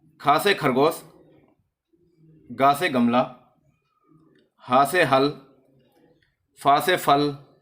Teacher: इनका उच्चारण होता है तो संघर्ष होती है वायु, यानी कि वायु जो होती है वो रगड़ कर निकलती है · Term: संघर्षी व्यंजन